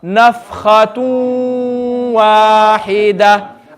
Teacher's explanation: So when we join the two words, we're going to skip the do pesh and we're going to read the waw with gunna.